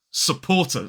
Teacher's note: So as an isolated word, this word has 3 syllables and 2 schwas.